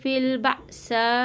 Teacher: حمزہ ساکنہ کو جھٹکا دیں گے